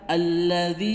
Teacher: Alladzi itu alif lam syamsiyah juga, dan khusus lam di sini karena sebenarnya tidak ada lam maka dijadikan satu dan diganti dengan tasdid juga. Alladzi, dzinya mad tabi'i 2 ketukan. Jangan sampai membaca alladzi kepanjangan